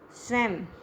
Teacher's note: अंत में अनुस्वार का उच्चारण म की तरह ही होता है।